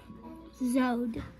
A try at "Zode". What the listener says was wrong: Close, but you didn't do the right O sound. We say ah. I did teach you long O. Z-O-O-O-D.